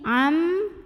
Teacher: Berikutnya di sini ada hukum idgham bi gunnah. Karena ada nun sukun yang menghadapi huruf mim, maka bunyi nun sukunnya masuk atau lebur ke mim. Am disertai bunyi dengung tahan.